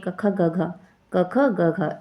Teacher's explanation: का वर्ग जो होता है वो कंठ ध्वनि में आता है